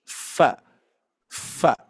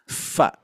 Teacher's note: huruf Fa itu pertemuan bibir bawah agak mundur agak belakang sedikit bertemu dengan Gigi dari atas